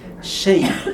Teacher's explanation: And the ya has to be prolonged a bit. Shay. And the ta is heavy.